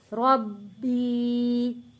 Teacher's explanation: یا ساکن سے پہلے زیر ہے، حروف مدہ ہے، 1 الف کے برابر کھینچ کر پڑھیں گے